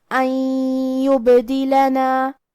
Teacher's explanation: ہم یہ نون کو یا میں ملا کے غنہ اور تشدید کے ساتھ یہ حکم کو ادا کریں گے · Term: ادغام